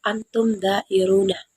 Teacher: menyuarakan mim mati dengan jelas di bibir serta mulut tertutup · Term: idhar syafawi